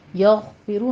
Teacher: بھی مفخم ہے، ضاد کو بھی پر پڑھیں گے۔ یغفرو میں غین مفخم پڑھا جائے گا، حروف مستعلیہ میں سے ہے، اور ادنا حلق سے آپ نے اس کو ادا کرنا ہے ، آگے را بھی مفخم پڑھی جائے گی، یغفرو لمن یشاء